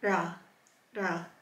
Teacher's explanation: So this is made in the front of the mouth with your tongue just behind your teeth. It's not as hard as the American raw.